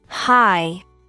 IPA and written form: haɪ (high)